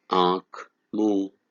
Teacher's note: जब स्वरों का उच्चारण मुख व नाक दोनों से किया जाता है तब उसे अनुनासिक स्वर कहते हैं